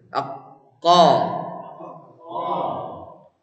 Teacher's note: ini huruf pangkal lidah sekali pak ya lidah paling belakang